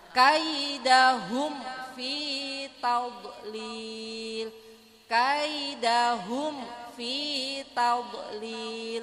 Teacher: izhar syafawi yang lebih jelas karena makharijulnya huruf mim dengan Fa itu berdekatan